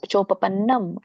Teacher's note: ಅಂದ್ರೆ ತಾನಾಗಿ ಚೋಪನ್ನಂ ಚೋ ಮುಂದೆ ದೀರ್ಘ ಇದೆ ಎಳಿಬೇಕು ಪನ್ನಂ ನಕೆ ನವತ್ತಿದೆ ನಂ ಮುಂದೆ ಅನುನಾಸಿಕ ಇದೆ ಅಂ ಅಂತ ಹಚ್ಚಬೇಕು · ಚೋ ಮುಂದೆ ದೀರ್ಘ ಇದೆ ಎಳಿಬೇಕು ಪನ್ನಂ ನಕೆ ನವತ್ತಿದೆ ನಂ ಮುಂದೆ ಅನುನಾಸಿಕ ಇದೆ ಅಂ ಅಂತ ಹಚ್ಚಬೇಕು ಚೋಪಪನ್ನಂ